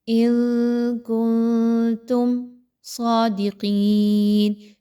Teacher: دونوں میں نون کی آواز کو کلیئر نہیں پڑھنا، اخفا کرتے ہوئے یعنی چھپاتے ہوئے پڑھنا ہے۔ آواز کو تھوڑی سی ناک میں جائے گی لیکن نون کلیئر نہیں ہوگی۔